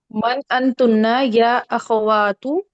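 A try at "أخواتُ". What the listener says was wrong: अख, एक तो आपने इसको अख नहीं पढ़ना, यहाँ पे सुकून नहीं है जो आप इसको अख पढ़ेंगे, ठीक है? इसको सही करके पढ़ें और इसको भी आप वाह तू करें। हाँ, वाह वाह तू, वाह जो है ना, आपको अपने मुंह को वाइड खोलना है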